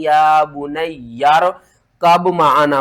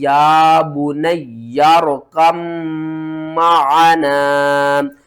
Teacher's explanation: या को भी 2 बार पढ़ेंगे, इस या को भी 2 बार पढ़ेंगे और इस काफ को हमने मीम के साथ मिलाना है, मीम के ऊपर गुन्ना करना है और मीम को भी 2 बार पढ़ना है